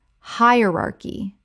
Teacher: Four syllables with the stress on the first. The c h makes a k sound.